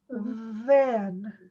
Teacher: to say the th sound in then put your tongue between your teeth and use your voice